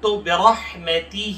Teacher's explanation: را کو موٹا پڑھیں گے، اور ہا کے نیچے کھڑی زیر ہے تو ایک الف کے بقدر کھینچ کے پڑھیں گے